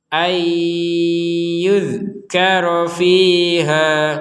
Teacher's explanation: yuza itu kan memberi harokat e kepada huruf dal, padahal huruf dal ini nggak ada harokat e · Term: huruf mati